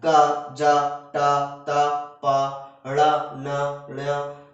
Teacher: ये अल्प प्राण में आता है। क, ज, ट, त, प, ड़, न, ण, इस तरीके के। ठीक है, इसमें कम हवा निकलती है।